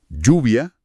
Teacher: la doble l se pronuncia casi como una y vibrante. O sea, lluvia en vez de lluvia. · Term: un fuerte yo